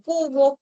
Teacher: Luego tienes la oclusiva velar sorda que puede ser representada por la letra C, Q y K